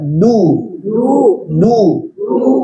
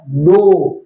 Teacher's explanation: bunyi tipis enggak ada bunyi o atau seperti o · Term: huruf tipis